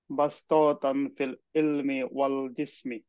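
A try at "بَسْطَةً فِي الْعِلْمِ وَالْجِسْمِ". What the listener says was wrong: টান হবে না, হ্যাঁ। বাস পতাং ফিল ইলমি ওয়াল জিসমি।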